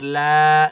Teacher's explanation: لام کو ایک الف کی مقدار کھینچ کر پڑھیں گے